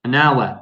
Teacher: even though hour starts with a consonant, we don't pronounce the H